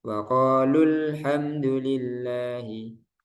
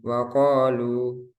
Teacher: dibaca tidak panjang ketika wasal atau bacaan sambung yang kedua dibaca panjang ketika wakaf yang pertama tidak panjang yang kedua panjang tidak panjang ketika dibaca